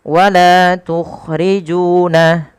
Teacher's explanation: Panjangkan huruf la, ju sepanjang 2 harakat karena keduanya ada bacaan mad tabi'i dan harus sama.